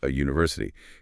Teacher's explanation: very first sound out of your mouth is a hard consonant y, glide, exactly like the letter Y. Because it sounds audibly like it starts with a consonant, it takes the article A, so a university.